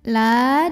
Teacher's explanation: lam yang fathah dipanjangkan sepanjang 2 harokat saja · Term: Mad Thobi'i